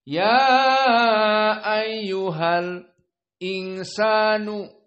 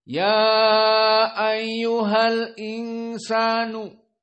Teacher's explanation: Jadi tidak dibaca al-insan ya ayyuhal. Al-insan tidak baca seperti jumhur, tetapi as-saktah.